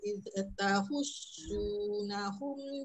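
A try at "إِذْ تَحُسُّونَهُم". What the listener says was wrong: Huruf zal terlepas sikit, dia terkena tahan hujung lidah hujung gigi. Pegang dia supaya dia tak iz. Dia memang huruf zal ni dia mudah melantun. Letak perlahan-lahan.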